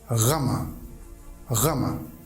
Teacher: This letter has guttural sound like German and French language have. Pure guttural sound, r, as in rama, rama.